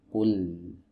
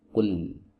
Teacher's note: Posisi lidah atau bagian lidah yang disertakan itu lebih banyak daripada saat kita mengucapkan huruf L dalam bahasa Indonesia